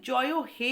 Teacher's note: যেমন জনগণ মনর যে জাতীয় সঙ্গীতের জয় হে যখন বলা হয়, হে এই শেষের এ স্বরধ্বনিটি কিন্তু টেনে উচ্চারিত হয়। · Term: প্লুতস্বর